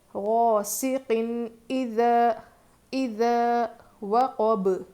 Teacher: جیسا ہے ویسے ہی پڑھیں گے، یعنی ظاہر کر کے پڑھیں گے نون کی آواز کو، تنوین میں جو نون کی آواز رہتی ہے نا اس کو ہم ظاہر کر کے پڑھیں گے